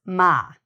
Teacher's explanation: the sound ma, which is again more coming through the nose, ma. But all of these are our lip sounds in English.